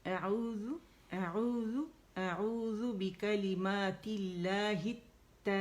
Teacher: ایک مد بن رہی ہے، 6 کاؤنٹ سے کھینچیں گے. یہ مد لازم کلمی مستقل ہے.